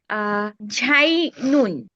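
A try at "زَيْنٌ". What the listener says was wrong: আপু, জায়ের উচ্চারণটা খেয়াল করেন। বাতাস বের হবে না। জায়া জবর জাই, জাই নুন। হ্যাঁ আপু, বাতাস বের হয়ে যাচ্ছে উচ্চারণে। জাই নুন, জাই নুন, জাই নুন।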